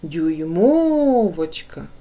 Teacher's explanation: Ми чуємо наголошений другий склад